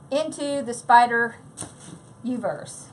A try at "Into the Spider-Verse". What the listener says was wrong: The Spider-Verse, not Uverse.